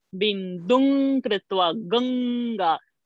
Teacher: So, guttural sound through the nose.